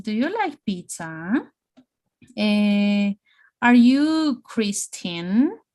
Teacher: Yes, no questions, rising intonation at the end of the word, okay?